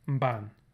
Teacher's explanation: so we get these prenasalized stops